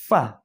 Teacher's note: নিচের ঠোঁটের পেট সামনের উপরের দুই দাঁতের আগার সঙ্গে লাগাইয়া। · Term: 14 নম্বর মাখরাজ